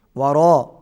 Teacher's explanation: واو پر ہونٹ گول ہوں گے، ورا اس کے اوپر بڑی مد ہے، کھینچیں گے